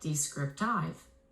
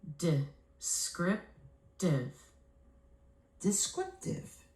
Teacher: I have to flex some vowels to schwas to clean up the pronunciation. I will flex the first and the last vowel phonemes to the schwas, and the word morphs into this: descriptive.